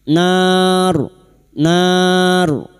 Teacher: Huruf ro yang mati karena wakaf dan didahului fathah kita baca tafkhim